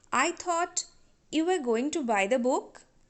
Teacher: sentence you have to imagine that book is already mentioned so book is old idea here so we used rising tone